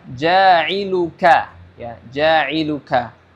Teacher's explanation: huruf Kaf ini memiliki makhraj yang sama dengan huruf qf sebelumnya tadi qala yaitu di Pangkal lidah ya lidah bagian belakang · huruf Kaf ini dia memiliki hams di dalamnya · huruf Kaf ini dia tipis tidak seperti Q yang tebal ya ya jadi harus berham dan tipis hams dan tipis dan